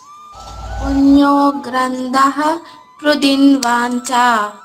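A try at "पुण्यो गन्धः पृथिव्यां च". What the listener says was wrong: గ్రంథం కాదమ్మా, గ్రంథం కాదు, గంధః వాసన, గంధః.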